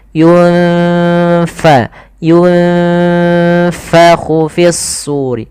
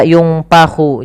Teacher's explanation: jangan pakai P, tapi dia F